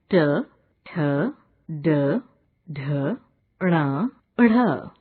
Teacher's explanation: इन वर्णों के उच्चारण में जिह्वा मूर्धा और कठोर तालु की संधि वाले भाग का स्पर्श करती है। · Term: पूर्व तालव्य